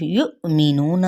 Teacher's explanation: یہاں پہ حمزہ ساکنہ پہ جھٹکا، نون پہ مد اصلی بالواو اور نون کی حرکت کو لمبا نہیں کریں گے.